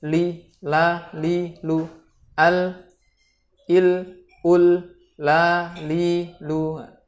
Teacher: Sifat rendah adalah kondisi di mana lidah kita tidak terangkat dengan ditekan ke langit-langit pada pengucapan huruf lam ini. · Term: lam istifal atau tipis